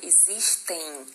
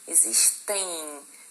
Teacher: Então, na verdade, esse M aqui, ele está fazendo o papel de uma semivogal. E se vocês forem, né, pronunciar essa palavra, existem, vocês vão perceber que no final dela você fala um i ali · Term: semivogal nasal